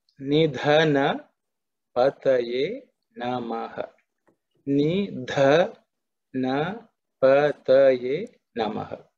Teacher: So the second letter is Mahaprana, or extra air you had to give.